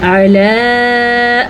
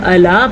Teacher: عین کے تلفظ کا دھیان رکھنا ہے، اگر آپ اس کو الا پڑھیں گے تو آپ غلط پڑھیں گے، آپ نے اس کو عین پڑھنا ہے، حمزہ نہیں پڑھنا۔